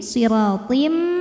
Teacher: Kemudian ada idgham bil gunnah karena ada tanwin kasrah menghadapi huruf mim, maka tanwin dileburkan ke mim. Siratim disertai bunyi dengung